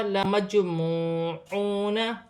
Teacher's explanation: واو ساکن سے پہلے پیش ہے تو واو مدہ بن رہی ہے، ایک الف کی مقدار کھینچ کر پڑھا جائے گا